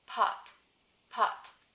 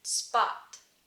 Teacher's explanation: When the voiceless plosive is at the beginning of the word or the stressed syllable, pot, pot, that's where you get the aspiration, the puff of air. But when there's something that comes before it, in this case the s comes before the p for spot, it doesn't have the same aspiration.